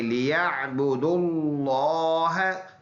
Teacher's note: اس لام کو پر ادا کریں گے کیونکہ اس سے پچھلے ورڈ اس پر پیش ہے، تو اس کو ہم نے پر ادا کرنا ہے، لیعبدوا اللہ، لِيَعْبُدُوا اللَّهَ مُخْلِصِينَ لَهُ الدِّينَ.